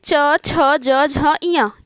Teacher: तालव्य व्यंजन, क्योंकि इनके उच्चारण में जीभ जो है वो तालु को टच करता है।